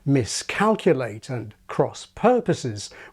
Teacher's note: where we have aspirated k and p